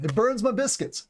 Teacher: my is sometimes pronounced as ma in the South and other dialects